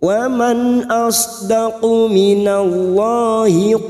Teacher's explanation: nun sukun dibaca jelas tanpa mendengung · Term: idhar halqi